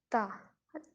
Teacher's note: تا زبان کا تھوڑا سا جو ہے آگے سے وہ دانتوں کے ساتھ اٹیچ کرتی ہے